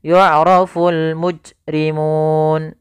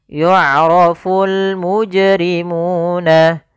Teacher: Kemudian pada lafal jim yang diwarnai dengan warna biru di sini merupakan bacaan qalqalah, yang dimana huruf jimnya harus dipantulkan. Kesalahan yang terjadi, yang pertama tidak memantulkan huruf jim.